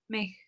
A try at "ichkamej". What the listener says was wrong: Ichkamej, pronúncialo junto.